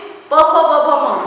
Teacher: उसके बाद ओष्ठ्य वाला वर्ग कहलाता है, जिसमें प फ ब भ म मतलब दोनों भी होठ स्पर्श के बिना हम प फ ब का उच्चारण नहीं कर सकते।